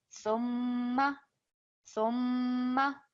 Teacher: we have our mim mushaddad, so that is a strong ghunna sound, which is for 2 seconds. Thumma, thumma, so a strong ghunna coming through for 2 seconds.